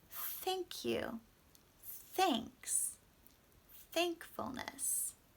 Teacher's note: our tongue actually comes and touches between the two teeth